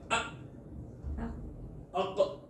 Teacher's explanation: ये जो शिद्दत वाले हरूफ हैं अजिदु क़त्तिम बकत 8 हर्फ, इनमें सांस बंद हो जाता है